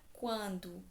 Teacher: continuar aqui com a palavra quando que é nazal eu tenho primeiro a semivogal u depois a vogal a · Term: ditongo crescente